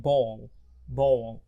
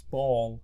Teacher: usually after a vowel sound بتبقى dark L